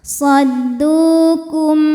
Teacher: Lalu ada hukum idhar syafawi karena mim sukun menghadapi huruf selain mim dan ba, yaitu huruf ain, maka mim sukun dibunyikan dengan jelas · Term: izhar syafawi